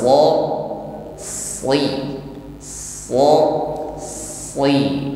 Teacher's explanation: Karena ia memiliki kualitas isti'la, yaitu gerakan lidah yang naik ke langit-langit mulut. Disertai dengan pengangkatan pangkal lidah saat mengucapkan huruf shad. Jadi suaranya tebal, sh. si, bukan hanya basi, basi bukan hanya si seperti huruf sin.